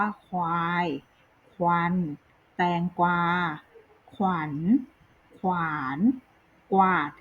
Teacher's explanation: อักษรควบที่เกิดจากพยัญชนะ2ตัวที่มีรสอยู่แล้วอ่านออกเสียงพยัญชนะทั้ง2ตัวพร้อมกันค่ะ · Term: คำควบกล้ำแท้